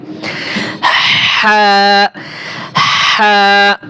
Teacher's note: হা হরফটা আগে বাতাস বের হবে, তারপরে হায়ের আওয়াজ বের হবে